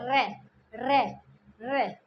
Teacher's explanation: जीभ में थोड़ा वाइब्रेशन सा होता है, प्रकंपन उठता है, रे, तो प्रकंपित व्यंजन हो गया रे।